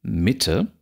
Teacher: dann haben wir es mit einem Trocheus zu tun, immer dann sitzt der Akzent auf der ersten Silbe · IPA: /mɪte/